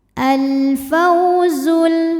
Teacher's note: alif lam qamariah karena alif lam menghadapi huruf qamariah yaitu Fa cara bacanya alif lam dibaca dengan jelas atau disebut dengan izhar qamari · ada wau sukun didahului harakat fathah cara bacanya dilembutkan atau dilunakan alfauzul kemudian ada hukum alif lam qamariyah karena alif lam menghadapi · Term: huruf Lin